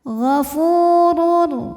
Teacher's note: huruf ro dibunyikan secara tafkhim karena ro berharakat damah tanwin maka Roho dibunyikan dengan [Musik] tebal gofurur Lalu ada hukum idgham